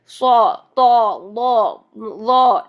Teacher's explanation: زبان کی جڑ بھی اوپر اٹھ جائے گی اور زبان کا درمیان بھی اوپر کے تالو کو ڈھانپے گا · اطباق کی کوالٹی آنے کی وجہ سے یہ حروف ڈبل موٹے ہو گئے، یعنی فل منہ بھر کے ادا ہوں گے